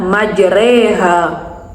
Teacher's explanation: khusus pada lafaz majreha dibaca E sehingga bunyinya majreha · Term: imalah